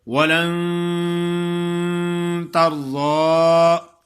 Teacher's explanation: غنہ کرنا ہے نون پہ، یہ غنہ مخفا ہے یعنی اخفا والا. اخفا منی چھپانا کہ نون کی آواز صاف نہ آئے.